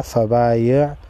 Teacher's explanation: زبر فا با الف زبر با یا عین زیر یا فبایع فبا ایک الف کی مقدار کھینچیں گے، الف مدہ ہے